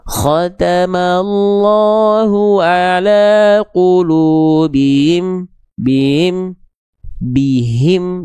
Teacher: Dia punya sifat-sifat huruf hak besar. Hak besar itu punya sifat namanya adalah hams dan rokhawah. Hams itu artinya mengalir nafas, rokhawah itu artinya mengalir suara. Nah, banyak orang yang melafalkan hak besar nggak jelas aliran suara dan aliran nafasnya.